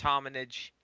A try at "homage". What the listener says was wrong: Homage. There's no N in it.